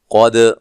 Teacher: قاف کو موٹا دال پہ قلقلہ کرنا ہے